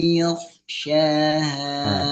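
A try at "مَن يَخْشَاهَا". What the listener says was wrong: tipiskan yo. Bukan mayyakh, tapi mayyakhsyaha. Tip. Oh, kok udah betul tebal, tapi hati-hati ya kepancing tebal.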